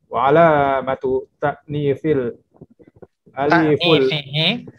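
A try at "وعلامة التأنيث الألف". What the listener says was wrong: Jadi kita bacanya jangan disambung terus, Pak ya. Wa alamatu ta'nifihi al-aliful mamdudatu.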